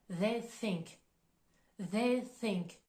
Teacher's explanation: le TH de the il est plus prononcé on va mobiliser les cordes vocales tandis que le TH de Think il va être plus doux